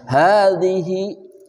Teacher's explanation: zal itu dari ujung lidah bersama ujung gigi seri atas